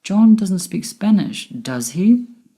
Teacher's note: my voice went up at the end with does he because I'm not sure whether he speaks Spanish or not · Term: rising intonation